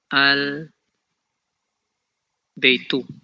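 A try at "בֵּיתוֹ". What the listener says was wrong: Beito, it's O, Beito. Vayasem oto al Beito.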